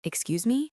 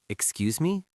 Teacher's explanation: I want you to raise your hand slightly and use that gentle rising intonation